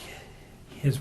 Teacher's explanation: The initial consonant sound is called a glottal fricative